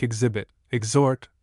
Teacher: the X is followed by a vowel sound, the H being silent and it is therefore pronounced eggs for it is followed by an accented syllable beginning with a vowel sound.